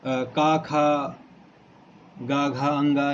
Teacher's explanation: का, खा, गा, घा, अंगा इनको हमने बताया कंठ से उच्चारित होते हैं